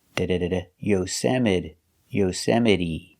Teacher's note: The T is pronounced with a fast D.